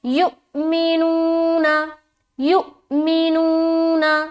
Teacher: تو دھیان رہے کہ پہلا جو ہے نا یہاں پر جھٹکا دینا ہے، اور یہاں پر پورا ادا کریں گے واو مدہ کو ایک الف کے برابر کھینچتے ہوئے